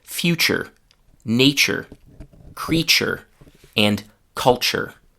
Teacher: we replaced those two sounds, t and y, with just one sound, ch. So replacing t and y with ch actually makes the sentence easier to speak. · In all of these words, we have a written letter T that is pronounced not as T, but as ch, because right after the letter T, there is a y sound, a U sound.